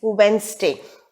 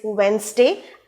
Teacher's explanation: Wednesday is Wednesday, and the stress is on the syllable wens